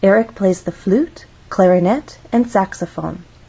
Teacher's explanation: flute has one syllable so we only have one syllable to make our voice Glide up · when we have a list we use Rising intonation in each phrase until we get to the final item of the list so we're actually going to go up on flute then we'll · until we get to the final item of the list so we're actually going to go up on flute then we'll go up again on clarinet this is our final item in the list so we're going to go down